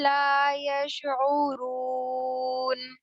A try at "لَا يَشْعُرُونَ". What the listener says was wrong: یش شین کو ہلانا نہیں ہے. یشعرون